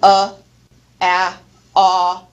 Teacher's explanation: those are neutral vowels because the lips assume a more neutral position